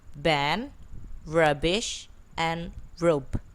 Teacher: B, which is voiced, bilabial, and stop. The initial, medial, final positions like ban, rubbish, and rope.